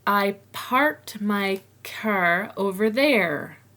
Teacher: an R at the end of the word, will usually be pronounced strongly in North American English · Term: North American R